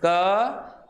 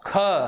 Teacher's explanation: जब आप पहला बोल रहे हैं क तो कम हवा निकल रही है, जैसे बोला ख, तो ख बोलते समय यहाँ पे हवा क्या निकल रही है? ज़्यादा निकल रही है।